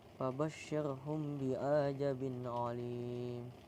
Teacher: Fabasyirhum itu ada ikhfa sapawi dibaca dengung 2 harokat. Kemudian bi'aja itu ada mat tabi'i panjang 2 harokat.